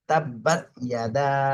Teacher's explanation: দালে তিন আলিফ টানতে হবে